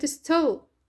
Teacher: الت هنا unaspirated. ليش؟ لأن سبقت بS